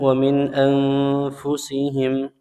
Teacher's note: nun sukun bertemu hamzah hukumnya izhar dibaca jelas tanpa dengung. Kemudian nun sukun bertemu fa anfusihim, ya, hukumnya ikhfa dibaca samar dan dengung.